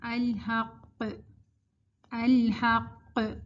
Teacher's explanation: آواز ایک تو آپ کی باؤنس ہوگی، پلٹ کر آئے گی، پلس زیادہ اسٹرانگ قلقلہ ہے کیونکہ یہ شد والا قاف ہے. اس کا مطلب ہے کہ 2 قاف ہیں اور پھر ان پہ ہم نے ایک سکون لے لیا، الحق، ٹھیک ہے.